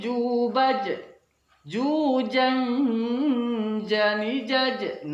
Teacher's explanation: huruf yang keluar dari tengah lidah kita di sebab itu kita harus membunyikannya seperti huruf j dalam bahasa Indonesianya namun tidak boleh disertai keluarnya nafas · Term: huruf Jim